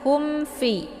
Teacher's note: Jadi cara bacanya itu cukup ditekan haknya saja ya. Bunyi mimnya itu jelas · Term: idhar syafawi